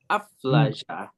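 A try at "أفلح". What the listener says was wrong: That's not a jim. This is a jim. Aflaha. Aflaha.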